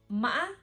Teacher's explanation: It go up, down, and then up. Up, down, up. · when we pronounce it, we have to go down quickly. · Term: thanh ngã, heavy tone